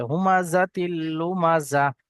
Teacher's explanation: তানবিনের পরে বা নুন সাকিনের পরে লাম এবং র আসলে, লাম অথবা র আসলে লামটাকে তানবিনের সঙ্গে মিলিয়ে বিনা গুণনায় পড়তে হবে।